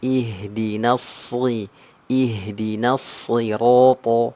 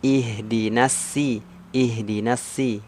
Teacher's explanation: juga tertukar dengan huruf Sin ya ihdinasi ihdinasi nah jadi maka karena di huruf Shad itu tebal huruf Sin itu tipis maka huruf shadnya harus dibaca tebal kuat walaupun nanti kasrah